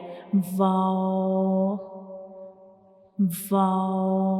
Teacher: We will make a circle with the help of up and down lip, and we don't touch these two lips completely. We only make a circle to pronounce wow, like wow, wow.